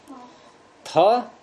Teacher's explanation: थ महाप्राण है लेकिन घोष नहीं है, ये भी गया।